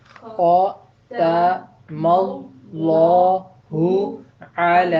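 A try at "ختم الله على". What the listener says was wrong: اب اعلیٰ آپ نے اکٹھا کر دیا. میں نے کہا تھا ہر وہ آواز جو اکیلی بولی جا سکتی ہے، لکھی جا سکتی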